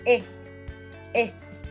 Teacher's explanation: E is a front close vowel produced with spread lips